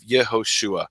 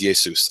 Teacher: the Greeks don't have a sh sound they make it s